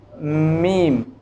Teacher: और इसी तरह अब मीम के साथ मिलता जुलता हर्फ है बा, जो दोनों होंठों से अदा होते हैं, बा मीम। अब मीम की आवाज़ नाक में जाती है, आवाज़ में हरकत पैदा हो गई।